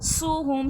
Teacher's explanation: सुहहुम सीन में सख्ती सीठी होगी